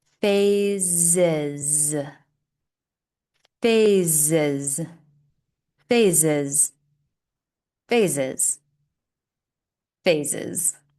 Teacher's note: Here we have two S's, but they sound like Z's. If you're struggling to say the Z, especially when it's in the center of the word, slow down, exaggerate the sound, drag it out, and continue to repeat.